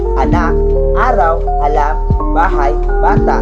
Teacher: At kapag mababa at nasa sentro ito ay a. Ang bibig ay bukang-buka at ang hila ay nasa gitna.